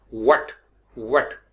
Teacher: व्हाट, वेट, वेट, यानी वी नहीं कहना, व। जब आपका वेट होगा तो वेट में दांत ऊपर वाले नीचे वाले होंठ पे नहीं आएंगे, क्योंकि ये डब्ल्यू है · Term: डब्ल्यू की साउंड